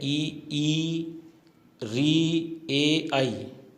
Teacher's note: अग्र का अर्थ होता है आगे, यानी जीभ के अग्र भाग से, यानी आगे के भाग से जिनका उच्चारण होता है वो अग्र स्वर कहलाते हैं